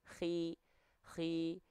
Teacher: huruf kho ketika kasroh itu dibaca menipis ketebalannya